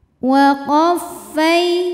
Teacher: fai ada harfu lin sebab ada ya sukun yang sebelumnya didahului harokat fathah. Maka cara membacanya adalah cukup kita lembutkan atau kita lunakan.